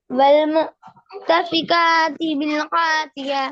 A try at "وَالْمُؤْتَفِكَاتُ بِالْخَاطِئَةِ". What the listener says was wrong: یار والمؤتفقات ہے نا یار، پیش پڑھو نا یار، کدھر دھیان ہے تمہارا یار، پیش میں نظر نہیں آتی، میں پڑھا بھی رہا ہوں، والمؤتفقات بالخاطئة،